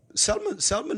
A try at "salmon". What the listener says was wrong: Salmon. It's a silent L.